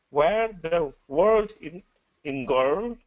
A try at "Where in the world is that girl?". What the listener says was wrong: So where in the world is that girl? Okay, so this one, world, in sentence sounded like word. So I want you to slow it down so you can get that dark L in the sentence. Where in the world is that girl?